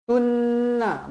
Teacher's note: wajibul ghunah dibaca dengung dua harakat